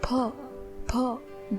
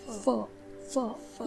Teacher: ध्यान रहे कि फ इस वर्ण का उच्चारण दोनों होठों से यानी कि ओष्ठ्य से किया जाता है। कई सारे लोग इस वर्ण का उच्चारण ओष्ठ और दंत से करते हैं, जो कि बिल्कुल गलत है।